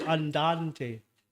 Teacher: So if you identify, for example, the strong syllables, the weak syllables in a word, like for instance, andante. So the stress is on the second syllable.